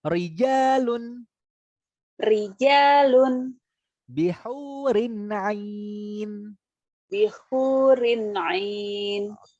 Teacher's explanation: rok tarqiq artinya adalah roknya dibaca tipis tandanya adalah ketika mengucapkan kita meringis